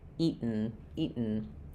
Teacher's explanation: we're doing an unreleased or stopped T sound where my tongue goes up to make the T, eat, and then I go right to what's called a syllabic N, eaten.